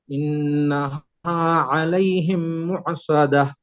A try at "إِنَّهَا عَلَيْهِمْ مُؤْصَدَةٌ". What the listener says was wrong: مؤصدة. आइन की आवाज क्यों आती है, आइन नहीं है, हमजा है. मुसादा सिर्फ झटका मारना है.